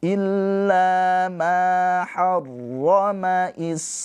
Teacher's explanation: mad thobi'i bertemu dengan hamzah di dalam satu kata ini adalah mad wajib muttasil dibaca panjangnya empat atau lima harakat